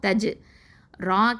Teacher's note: ரா கெஸ்ரா யா சுகுன் ரீ, 2 அலிஃப் நீட்டணும், யாவுல் மத்து